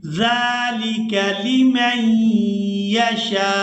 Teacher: जाल को नरमी के साथ अदा करेंगे और इसको खड़ी ज़बर की वजह से खींच कर अदा करेंगे